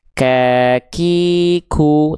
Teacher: pastikan kafnya keluar ada percikan percikan nafasnya ya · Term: huruf kaf